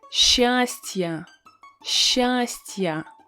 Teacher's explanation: we have a vowel ya that comes after a soft sign. That is why we need to pronounce this vowel as a combination of two sounds, y and a.